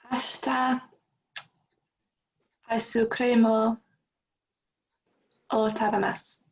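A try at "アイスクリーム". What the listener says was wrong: Just at the very end, it's creamu. And it's ever so soft, but ice cream or tabemasu.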